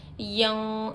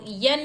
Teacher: नून की आवाज़ को नाक में छुपाकर इख्फा करेंगे